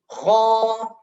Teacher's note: Ini paling tebal yaitu fathah diikuti alif. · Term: tafkhim